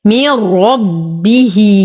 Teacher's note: من ربه، نتم كسرة الميم، لدينا نون ساكنة وبعدها الراء، في الحكم إدغام كامل بلا غنة. من ربه، لدينا هنا ها ضمير مفرد مذكر غائب، ففيها صلة صغرى لأن ما بعدها ليس همز.